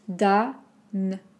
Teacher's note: attention, le O ici est très ouvert aussi. Danone.